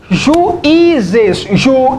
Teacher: tá claramente que a sílaba tônica aqui é o I